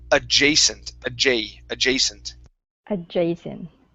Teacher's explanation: Give me a little bit more of a long a on the second A.